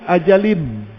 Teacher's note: hilang dah bunyi tanwin, hilang bunyi nun mati, sebab ada idgham